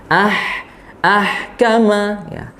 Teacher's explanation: alirkan suaranya tanpa ada mantul ya huruf h nya dan alirkan juga nafasnya